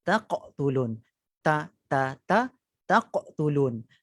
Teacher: Sepatutnya kita pisahkan hak ta dengan qaf, jadi taqtulun. Huruf tu tetap sama, hujung lidah di pangkal permulaan gigi.